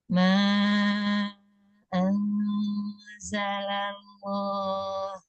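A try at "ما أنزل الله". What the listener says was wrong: Kurang tebal. Lafzul jalalahnya kurang tebal. La, ketika lafzul jalalah tekan tengah lidahnya. Al, tengah lidahnya tekan ke bawah. Jadi ujung lidah tetap menempel di makhraj, tengah lidah tekan ke bawah. Allah. Allah. Allah. Tebarkan. Allah, ini juga masih menekan lidahnya. Fathahnya sempurnakan, buka mulutnya. Allah.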